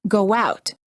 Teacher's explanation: For example, when we say go out, we insert a little w sound and it sounds like go out. Make sure that you don't fully pronounce or over pronounce the w sound. Don't say go out. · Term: short w sound